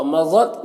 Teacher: ضاد حروف مستعلیہ میں سے ہے، پر پڑھیں گے